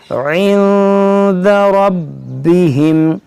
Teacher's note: यहाँ देखेंगे नून साकिन के बाद दाल है, यहाँ पर इख्फा होगा, रा को खूब मोटा पढ़ेंगे, बा को खूब जमाव के साथ